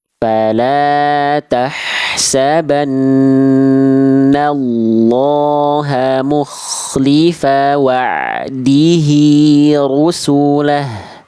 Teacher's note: Oke, nanti ainnya latih rodomah, jangan ru. Angkat pangkal lidahnya rodomah, dan fathah itu tebal. Ya, maka harus diangkat bagian pangkal lidahnya Bunda.